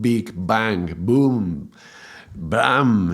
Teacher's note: the very sound of the B has to cross through the barrier of your mouth, of your lips, yeah? So there has to be a pressure in your mouth and it has to be released. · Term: plosive